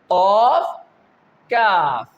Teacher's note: Simply I revise, qaf, kaf. Its makharij is the back part of our tongue.